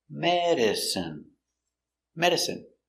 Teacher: Stress on the first syllable